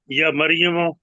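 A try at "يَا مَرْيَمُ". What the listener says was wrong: नहीं नहीं या या लंबा करें जरा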